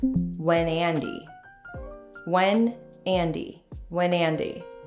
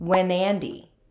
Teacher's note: we link the consonant on to the vowel together the words are pronounced pronounced wandy you can do this if